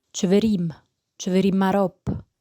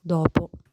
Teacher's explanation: the consonant d in Neapolitan becomes an R sound between vowels or at the beginning of a word